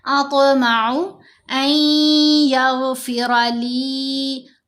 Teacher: نون ساکن کے بعد یا مشدد آ رہی ہے، تو یہاں ہم نے نون کی آواز کو ناک میں پڑھنا ہے، یعنی غنہ کرنا ہے.